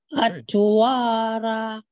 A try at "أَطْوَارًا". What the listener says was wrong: So you did a nice job on the ra, but this time now you're saying atwara. So you're not bouncing the ta.